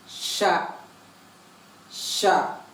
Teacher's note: இந்த சா பொறுத்த வரைக்கும் நம்ம எப்படி சொல்லணும்னா ஒரு ஹஸ்கி சவுண்டோட வரணும்.